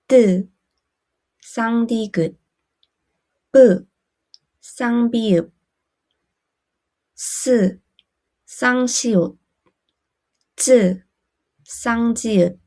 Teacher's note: Tense consonants use very little air with almost no air coming out from your mouth And feel tighter in the throat